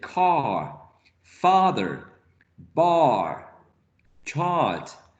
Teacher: So you say car, father, bar, chart. So it's way back and low.